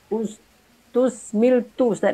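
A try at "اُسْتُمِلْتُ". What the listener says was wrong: Ustum, bukan ustus. Ustum. Mim. Ustum lil. Ya, pakai tasdid.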